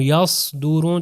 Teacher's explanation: زبان پیچھے سے اوپر جا رہی ہے اور موٹا تلفظ ہو رہا ہے